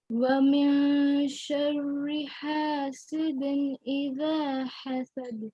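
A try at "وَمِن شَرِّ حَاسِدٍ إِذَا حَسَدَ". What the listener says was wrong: اور بھی زبان تھوڑی سی پیچھے کریں گے نا اور بھی اچھا ہو جائے گا.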